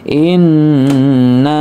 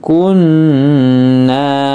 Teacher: Nun tasdid maka dibaca dengung gunah ditahan ya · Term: gunnah